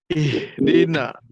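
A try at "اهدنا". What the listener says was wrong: ihdina. Ya harus agak ini dia H kedengaran. Ihdina. Bisa ya, bisa bedakan H itu di mana tenggorokan bawah.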